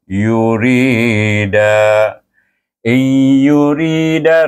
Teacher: RI dibaca dengan asli sebab sebelum ya ada baris bawah ro itu dengan nipis ro itu dibaca Ri Da panjang juga dibaca dengan m Jaiz